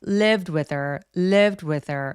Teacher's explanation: 대명사들의 h 소리를 많이 약화시켜서 소리를 안 내버리는 경우도 진짜 많아요. 그래서 with her 이런 식으로 thir처럼 부드럽게 연결을 해주시는 거예요.